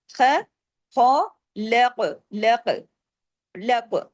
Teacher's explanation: ख को हैवी करना है काफ को हैवी करना है और काफ पे कलकला भी करना है